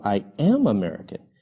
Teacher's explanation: posso em vez de usar contração eu falo I am American eu coloco mais ênfase e eu não uso a contração para poder colocar ênfase no verbo to be I am American então nós colocamos a ênfase no verbo auxiliar